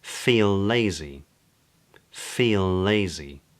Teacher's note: ‘feel lazy’ sounds more like ‘feelazy’